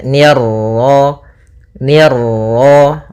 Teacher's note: Nah, kemudian pada lafaz ma ada bacaan mad tabi'i yaitu fathah bertemu alif, ni tipis ketemu ra yang ra tafkhim, ra tebal, maka nirra.